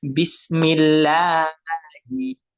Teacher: আল্লাহ তাআলার নামের আগে যদি জের আসে তখন পাতলা করে পড়তে হয়। যেমন বিসমিল্লাহি, বিসমিল্লাহ বলা যাবে না।